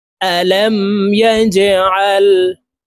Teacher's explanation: এই জিম হরফ অলকলার হরফ নিচের দিকে ধাবিত করে ধাক্কা দিয়ে উচ্চারণ করব।